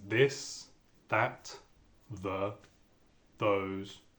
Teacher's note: on s'intéresse au th en début de mot et particulièrement le TH sonore celui qu'on entend dans les mots comme this that the those